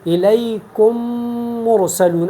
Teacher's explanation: اور یہاں تجوید میں ادغام کا مقصد یہ ہے کہ جب ہمارے پاس ایک میم آ جائے اور اس کے بعد دوسرا میم ہو، تو ہم ایک میم کو دوسری میم میں داخل کرتے ہیں، اور دوسری میم کو ہم مشدد بنا کے غنہ کے ساتھ ہم ادا کرتے ہیں